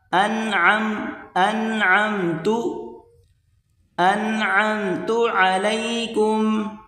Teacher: عین، اس کے بعد عین کو میم کے ساتھ، انعمت علیکم، عین کو گلے سے نکالا جائے گا زور لگا کر